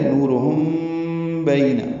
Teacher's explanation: نورہم میں نو واو مدہ ہے، 2 حرکات لمبا کریں گے، را پر پڑھیں گے۔